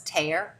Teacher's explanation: we're stopping the airflow rather than having it as an affricate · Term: deaffrication and stopping